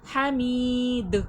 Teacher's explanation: حمید، می میں یا مدہ کھینچ کر اور دال میں وقف پہ قلقلے کی صفات واضح ہوگی، دال کی آواز پلٹ کر آئے گی